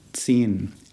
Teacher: watch out for the Z sound of the Z and the drawn out vowel sound in the middle